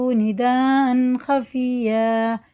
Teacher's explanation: مد متصل ہے، 4 سے 6 الف کے برابر کھینچ کے پڑھنا